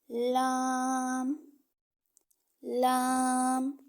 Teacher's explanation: زبان کا کنارہ اور مسوڑوں سے ادا ہوتا ہے، یعنی جو ہماری زبان کے کنارے ہوتے ہیں نا، آگے ہماری زبان کی نوک ہے اور جو سائڈوں پہ کنارے ہیں، ٹھیک ہے۔